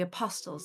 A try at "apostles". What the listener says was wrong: The T is silent, by the way. It's apostles.